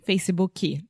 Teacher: the very strong tendency that you cute Brazilians have to add a chi chi to the end of everything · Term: supporting vowel